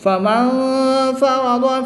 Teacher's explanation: نون ساکن کے بعد فا حروف اخفا میں سے ہے، تو یہاں پر اخفا ہوگا، غنہ زمانی کر کے پڑھیں گے۔